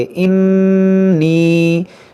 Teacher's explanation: नून मुसद्दद है, इसमें गुन्ना करेंगे